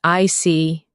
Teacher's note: When you show understanding with I see, your tone drops slightly to show calmness